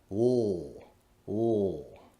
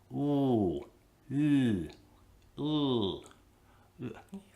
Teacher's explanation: The back of my tongue is pulled up very near my soft palate, or velum, with just enough space for my voiced air to pass through.